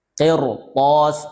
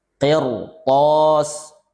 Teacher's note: ra sukun didahului kasrah, tapi setelah huruf ra ada huruf isti'la. Qirtas, tebal.